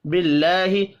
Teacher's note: اللہ کا نام زیر کی وجہ سے باریک پڑھا جائے گا